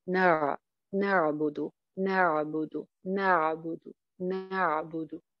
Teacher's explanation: دال کی پیش کو وہ بڑھا کر جو ہے نا وہ واو مدہ میں تبدیل کر دیں گے